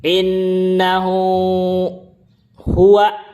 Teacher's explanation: Domir hu-nya tersebut itu dibaca panjang 2 harakat. Kenapa? Sebelumnya itu berharakat yaitu nun, dan setelahnya juga berharakat yaitu ha. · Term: Mad silah sugro